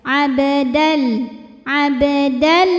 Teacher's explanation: Idam bilunah karena ada tanwin fathah yang menghadapi huruf lam jadi bunyi tanwinnya ini dimasukkan ke lam abdal tidak disertai dengung Jadi jangan sampai ditahan ya cukup ditekan saja · Lam pada lafaz Allah atau lam jalalah dibunyikan secara tarqiq sebab huruf sebelumnya berbaris kasrah. Maka bunyinya ini tipis, pangkal lidah datar. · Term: idgham bila gunnah